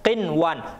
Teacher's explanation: nunnya jelas, tidak dimasukkan di dalam huruf selanjutnya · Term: idhar